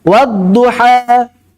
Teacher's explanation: Jadi a campur dengan E · wadduha antara A sama E suaranya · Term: imalah